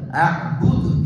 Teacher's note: நிறுத்தும் போது சுக்குன் வச்சு கல்கலாவோட அஅ்புத் என்று நிறுத்தணும்